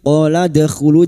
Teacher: dal sukun yang mati asli di tengah kalimat qalqalah sugroh. Jangan lupa dipantulkan. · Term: qalqala sughra